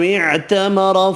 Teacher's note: را زبر کی وجہ سے پر پڑھیں گے